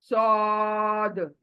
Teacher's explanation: लेकिन यहाँ पर जबान पतली थी, यानी चौड़ी थी। यहाँ पर जबान मोटी होगी, गोल होगा, गोलाई में आ जाएगी। सौद। ओके, आ करके मुंह गोल होगा, पूरा मुंह गोल होगा।